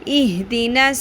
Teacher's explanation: صاد میں پر بھی کرنا ہے، سیٹی کی آواز بھی آئے گی